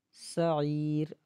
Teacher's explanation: ساتھ ڈائریکٹ ملا دیں گے، سعیر، سین کو کھینچنا نہیں ہے، عین کو ایک الف کی مقدار کھینچیں گے